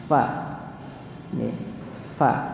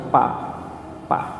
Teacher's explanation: Gimana kalau kita nyebut huruf fa, bibir antar bibir atau gigi atas ketemu dengan bibir bawah? Gigi bagian atas bertemu dengan bibir bagian bawah bagian dalam.